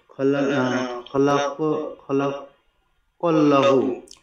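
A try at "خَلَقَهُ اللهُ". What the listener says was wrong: খলাকা হু আছে একটা, হু বাদ যাচ্ছে, খলাকা হুল্লাহ, জি হু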